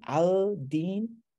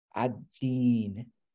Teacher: The lam merged into the dal.